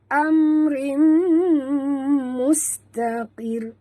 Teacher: tanwin itu baris 2 di bawah bertemu dengan mim, kita kena tutup mulut dan dengung, idgham ma'al gunah.